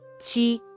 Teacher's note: This word is the first tone, so it should be Qī